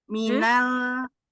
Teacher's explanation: Tapi tetap melebar ya Bunda. Sentuhan ujung lidahnya itu lebar, enggak di ujung saja, tetapi di mahrojnya lam semuanya nempel. Tetapi panggal lidahnya turun, enggak naik.